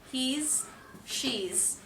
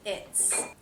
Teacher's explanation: the s in he's and she's is a Z sound that's voiced because the sound before a vowel was voiced